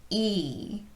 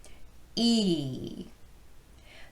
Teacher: when you make the e sound it's contacting your side teeth on the inside and it's kind of pushing against them for stability